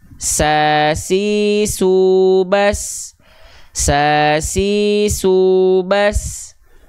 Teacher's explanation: percikan nafas tapi mengalir e mengalir nafas contohnya nih huruf Sin huruf Sin punya sifat hams tapi dia mengalir nafas